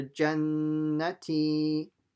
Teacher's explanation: Ta with a kasra. So it's a t, but stretched by ya sakin.